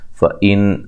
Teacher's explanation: فَإِن نون ساکن کا اظہار ہے، غنہ نہیں کریں گے